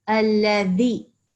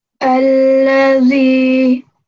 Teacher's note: So you're going to put your tongue in between your teeth. It's not za. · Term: dhal